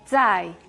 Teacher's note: esa Z que suena como TS